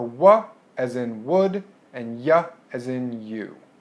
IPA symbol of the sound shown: w j